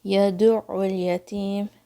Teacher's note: عین کی آواز حلق کے درمیان سے آئے گی